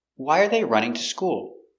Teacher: Why, important word, the action, the verb, running, stress.